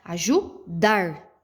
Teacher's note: quando eu entono mais a minha voz, a sílaba mais forte que eu pronuncio é o dar.